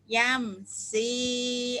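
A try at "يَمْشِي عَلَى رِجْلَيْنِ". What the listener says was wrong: Shi-nya kurang keluar. Yam, shi.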